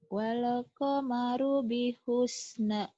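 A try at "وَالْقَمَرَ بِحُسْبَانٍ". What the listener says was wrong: Bihusban. Titiknya selalu lupa ya kau sering ketuker antara nun dan ba. Bihusban. Iya bi. Wal qamaru bihusban.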